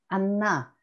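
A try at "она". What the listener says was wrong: Tu as oublié que c'est sur le A. Voilà. Tu vois, l'accent. Anna. Anna.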